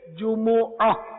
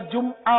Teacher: عربی تلفظ، قرآنی تلفظ اس کا یہی ہے جمعہ۔ البتہ اردو میں میم ساکن ہو جاتا ہے، جمعہ بولتے ہیں۔